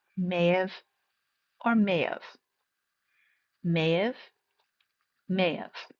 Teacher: For may have again it's going to combine and sound like one word. The H is a little bit silent or very very soft.